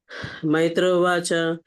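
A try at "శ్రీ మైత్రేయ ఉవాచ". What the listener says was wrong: శ్రీ మైత్రవాచ, శ్రీ మైత్ర అని చెప్పాలి. పాపం శ్రీ తగిలించండి పాపం.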